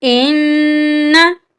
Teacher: यहाँ पर नून मुशद्दिद है, नून पर हम गुन्ना करेंगे।